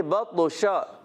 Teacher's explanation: شین میں آواز منہ میں پھیل جاتی ہے. اس کو کہتے ہیں صفت تفشی. · شین وسط زبان وسط تالو سے ادا ہونے والا حرف ہے. جیم، شین، یا زبان کے درمیان اوپر تالو کے درمیان سے ادا ہوتا ہے اور شین میں آواز منہ میں پھیل جاتی ہے.